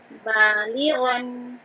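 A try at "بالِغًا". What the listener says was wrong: Ya, coba perhatikan untuk baris yang terakhir, dia mengandung mad, ya. Ya, sukun sebelumnya, harokat, kasroh, jadi harus 2. Balighon.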